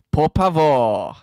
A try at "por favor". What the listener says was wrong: Wait, say, hang on, say por favor again. Por, you're saying pavor, almost. Pavor. F. Por favor. With an F, not a P.